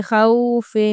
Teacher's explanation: حروف لین یعنی واو لین اور یائے لین کے بعد بھی اگر وقف کریں تو ادھر بھی مد ہوتا ہے، جس کو 3 سیکنڈ لانگ کر کے پڑھتے ہیں